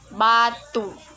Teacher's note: ciri-ciri agak tinggi belakang bulat